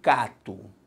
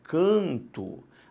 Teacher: o que aconteceu foi simplesmente a nasalização da vogal